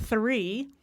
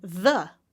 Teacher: we have the unvoiced version as in the number three and then we have the voiced version as in the word the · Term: TH sound